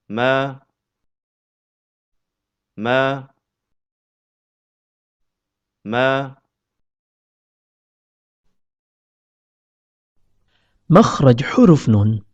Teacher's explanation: huruf mim keluar dari pertemuan antara bibir bawah dengan bibir atas